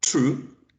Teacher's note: the first sound in true is voiceless no vibration of the vocal chords in alveolar right because the tip of the tongue touches the · voiceless no vibration of the vocal chords in alveolar right because the tip of the tongue touches the alveolar ridge and it's a stop